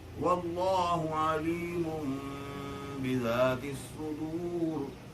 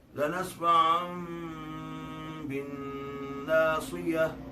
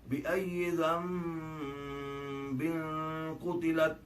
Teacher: نون کی آواز جو ہے وہ میم میں بدل جائے گی. یعنی نون کی آواز نہیں بولی جائے گی بلکہ نون کی جگہ میم کا حرف جو استعمال کیا جائے گا. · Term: اقلاب